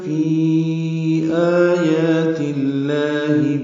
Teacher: فی یا مدہ کے بعد آیات میں یہ حمزہ آنے کی وجہ سے فی میں مد منفصل آئی ہے